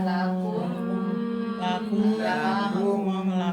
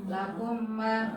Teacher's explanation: Maka bacanya mim yang pertama dimasukkan ke mim yang Kedua. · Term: dengung ditahan